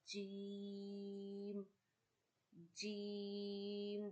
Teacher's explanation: you touch your middle of the tongue to the middle of your palate and you read Jeem